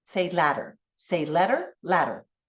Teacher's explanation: our tongue flaps up and down that's called a flap